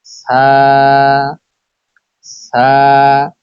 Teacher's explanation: জিহ্বার আগা সামনের উপরের দুই দাঁতের আগার সঙ্গে লাগিয়ে উচ্চারিত হয় সা